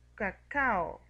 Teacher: Tenemos en el encuentro de la vocal A y la O, por lo tanto tenemos que separarlos en sílabas diferentes. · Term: hiato simple